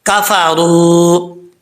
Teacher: را کے اوپر زبر ہو تو را پر پڑھا جاتا ہے. پر کا مطلب ہوتا ہے موٹا پڑھنا